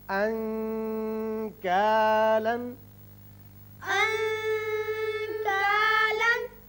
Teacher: انکالا۔ کاف، یہاں نون کا جو آپ اخفاء کریں گے تو تھوڑا سا غنّے کی طرف زیادہ مائل ہوگی آواز